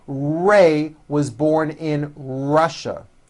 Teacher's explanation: notice how my lips come forward on all my R's and W's